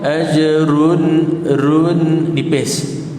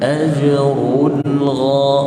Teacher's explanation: run perlu ditebalkan sebab dia berbaris depan. Ajrun, tidak boleh baca contoh ajrun, run nipis.